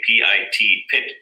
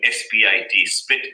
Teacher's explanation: the voiceless plosives are aspirated at the beginning of a stressed syllable